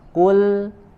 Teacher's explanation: Kul, ya, kemudian huruf lam sukunnya tipis, ya. Kul, huruf lamnya tidak menjadi tebal seperti huruf qaf. Jangan kul, tapi huruf lamnya tipiskan, ya.